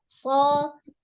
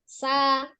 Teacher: samar atau ada hembusan nafas yang mengalir ketika mengucapkan huruf shad, sama dengan sin kemarin ya. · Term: al-hams